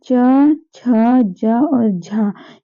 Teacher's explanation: च, छ, ज और झ ये चारों हो रहे हैं तालव्य से।